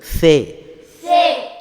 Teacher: சே சொல்லும்போது நாக்குடைய நுனி பல்லுடைய முன்பல்லுடைய முன்பகுதியில் விளிம்பில் வச்சு காற்றை வெளியிடும்போது வரும்.